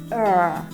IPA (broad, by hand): ɜː